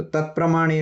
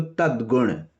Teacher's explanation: तत के बाद प्रमाणे आया तो अघोष था तो तत् प्रमाणे रहा तद गुण आया तो गुण का ग घोष है तो तद गुण हो गया